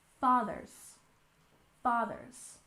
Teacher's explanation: we stress the first syllable in fathers